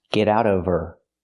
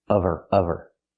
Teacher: Now we need the V sound in of because we don't pronounce the H in her.